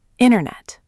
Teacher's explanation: We don't see the T at all. >> We totally dropped the first T. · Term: dropped sound